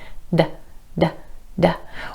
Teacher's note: When you make the D sound, your tongue tip taps the ridge behind your top front teeth. D, d, d. Or it might be just a little bit further back based on your native language.